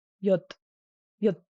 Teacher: the sound over time, especially in Central Tibetan, has become silent, but the impact on the length of the sound has remained.